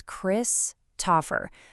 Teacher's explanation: The stress, the spotlight falls right on that first syllable.